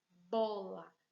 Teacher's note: Percebo que o bo é a sílaba tônica porque a gente coloca mais força nessa sílaba. O lá, a gente vai dizer que é a sílaba átona.